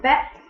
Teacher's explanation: the tongue is midway and the lips are spread